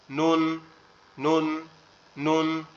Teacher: নুনটা হচ্ছে জিহ্বার আগা উপরের তালুর সঙ্গে, একবারে সিম্পল, নুন নুন নুন, সাধারণভাবে।